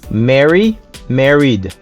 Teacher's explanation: Numéro 6, married. Le AR ici se prononce comme un E. Et puis après, il prononce l'autre R.